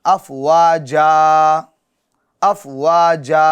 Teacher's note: تو اب افواجن کو آپ دو زبر کی تنوین کو کس سے بدل دیں گے؟ الف سے بدل دیں گے، یعنی اب تنوین نہیں پڑھیں گے آپ